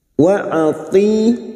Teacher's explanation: huruf ta kasrah diikuti ya sukun, dua harakat kita panjangkan mad tabi'i.